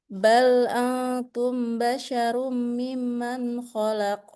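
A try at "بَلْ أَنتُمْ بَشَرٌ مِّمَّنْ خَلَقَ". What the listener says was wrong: Qalqalahnya mana? Khalaqa. Khalaqa. Khalaqa. Khalaqa.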